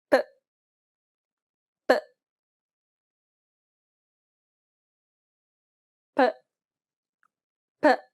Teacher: an unaspirated P sound, meaning there shouldn't be a burst of air as you pronounce this sound